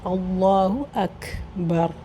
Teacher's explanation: اللہ کا لام موٹا ہوگا کیونکہ پہلے فتحہ ہے، زبر ہے، تو اللہ اکبر۔